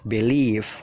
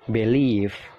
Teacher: penekanannya itu mengarah ke leave, leave-nya ditekan ya. Jadi B-nya itu singkat aja. Believe kayak gitu.